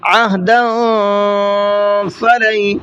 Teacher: تنوین کی آواز کو تھوڑا سا ناک میں روک کر کے چھپا کر کے پڑھیں گے